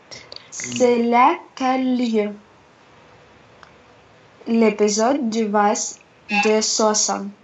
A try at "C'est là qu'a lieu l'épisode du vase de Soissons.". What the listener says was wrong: Voilà, très bien.